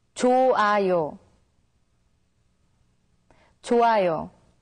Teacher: When the character hyut meets with iung, the character hyut becomes silent, so it's pronounced as 좋아요.